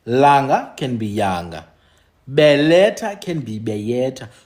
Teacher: Like I've explained it, that L can move to Y. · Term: L becomes Y